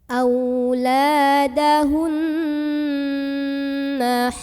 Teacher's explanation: maka cara membacanya didengungkan bunyi an-nya ya. Ditahan kurang lebih 2 harokat sampai terasa getarannya ke hidung. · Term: gunnah musyaddadah